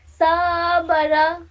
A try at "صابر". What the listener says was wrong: صاد کو تھوڑا موٹا پڑھیے.